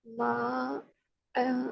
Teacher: अलिफ से पहले जबर है इसलिए हम इसको अलिफ मद्दा कहेंगे और 2 काउंट स्ट्रेच करेंगे